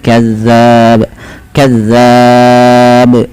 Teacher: pantulkan pada lafal ba karena dia menjadi huruf ba yang sukun. Nah, di sini ada bacaan qalqalah.